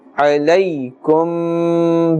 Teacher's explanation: ya sakin has a fatha before it, and therefore this is ya leen, and we will not pull the sound of that letter.